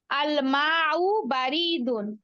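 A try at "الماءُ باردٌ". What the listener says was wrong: রতে টান হবে না, বাড়ি টান হবে না, বা বারিদুন।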